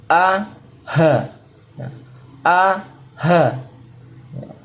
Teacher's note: ada Hamzah ya dan ha Nah ini letaknya di tenggorokan bagian bawah